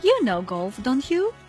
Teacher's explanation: in this case the tone of voice goes up at the question tag